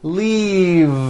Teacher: F the word is leave with a voiced V keep the voicing going throughout the whole word and voice the V leave like that if you stop the voicing at the end